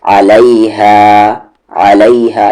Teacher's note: عین کا مخرج صحیح سے بولے، مڈل تھروٹ